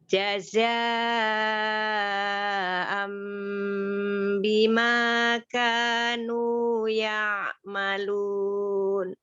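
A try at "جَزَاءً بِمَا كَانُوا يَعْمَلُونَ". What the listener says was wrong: Ya, ya'malun. Ya, nunnya kembali ya supaya jelas nunnya. Ya, jadi ketika dia kembali, nunnya disukunkan itu bentuk mulutnya kembali sempurna, maka dia akan jelas nunnya.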